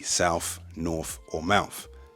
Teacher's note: the TH at the end of a word can sometimes turn into an F